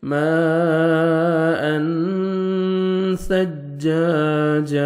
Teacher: ماء، تنوین کے بعد 2 زبر 2 زیر 2 پیش کو تنوین بولتے ہیں۔ تنوین کے بعد جو 15 لیٹرز ہیں حروف اخفا اس میں سے سا آ رہا ہے، تو یہاں پہ آپ نے نوز میں ساؤنڈ لے کے جانا ہے۔ ماء ثجاجا، سا کو نرمی سے ادا کریں گے تاکہ سین میں ساؤنڈ مکس نہ ہو۔